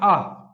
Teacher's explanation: जैसे आ बोलते समय हमारा मुख होता है वह ज्यादा खुलता है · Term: विवृत